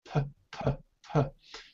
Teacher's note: There's air coming from your mouth when you say P.